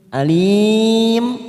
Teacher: alim mat arid li sukun 4 harokat